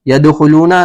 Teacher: يَدْخُلُونَ دال ساکن ہے اور حروف قلقلہ میں سے ہے تو یہاں پر قلقلہ ہوگا